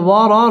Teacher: ওয়াও ঠোঁট গোল করে উচ্চারণ করতে হবে